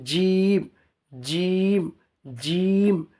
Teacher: জিমটা একদম গাঢ় ভাব হবে, জিভের মিডিল এবং উপরের তালু আছে যে উপরের উপরের মুখের উপরের তালুর মিডিল চেপে জিম, জিম, জিম, যেটা আপনি জিমের সাথে জাবার লাগিয়ে পড়লে উচ্চারণটা এসে যাবে।